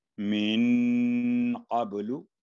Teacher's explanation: नून पर इख्फा यानी 2 सेकंड गुन्ना और बा पर कलकला, मिन क़ब्लु, और कबलू ना हो, लू के बाद 1 सेकंड सिर्फ लू।